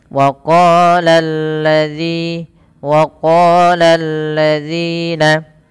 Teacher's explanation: Pada lafal lalladzi ini lamnya dibaca tipis, jangan dibaca tebal, jangan waqalalladzi tebal. Ya, lam di sini perlu dibaca dengan bacaan yang tipis